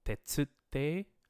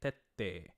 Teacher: rather than saying tetsu te, the tsu becomes a tsukuon, and you get tette.